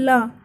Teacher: अगर हम बोलेंगे ला, तो ला बोलने में हमारी जीभ उठेगी, ऊपर तालू पर लगेगी और फिर नीचे आएगी।